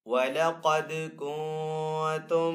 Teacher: نون ساکن کے بعد آگے تا حروف اخفا میں سے تو یہاں پہ اخفا والا غنہ کریں گے